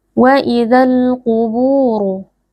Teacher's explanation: huruf qaf huruf tebal dibaca dengan mengangkat pangkal lidah. Wa idzal quburu, bu ada mad tabi'i karena ada waw sukun yang sebelumnya berharokat dhammah dibaca panjang 2 harokat.